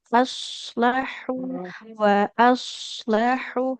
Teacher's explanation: di huruf shad aslahu wa aslahu harus tebal ya